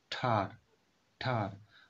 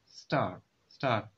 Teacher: If you put the back of your hand in front of your mouth as you say tar, then star, you should be able to feel some physical evidence of aspiration. The pop-up air accompany the T sound at the beginning of the tar, but not in the star.